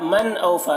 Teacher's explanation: بلا، من اوفا، نون ساکن کے بعد حمزہ ہے، نون میں اظہار ہوگا